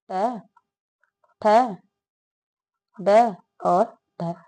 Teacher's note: ट ठ ड और ढ ये मूर्धन्य ध्वनि है